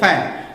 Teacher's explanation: और फैन को आप जब कहेंगे तो ऊपर और नीचे के दांत, ऊपर के दांत और नीचे के ओंठ को आपस में मिलाना पड़ेगा, तभी आप फैन बोल पाएंगे